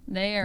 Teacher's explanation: the vowels are pronounced kind of long and sound like they're split into two syllables